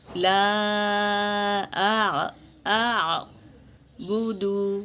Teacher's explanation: لا، یہ بھی مد ہے، مد منفصل، اسے بھی 3 سے 4 الف کے مقدار کھینچیں گے، اور عین کو موٹا پڑھیں گے، حلق سے پڑھیں گے، عین کو حلق سے پڑھیں گے اور صاف پڑھیں گے، حمزہ اور عین کی آواز واضح ہو۔